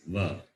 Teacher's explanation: Va is dental and labial.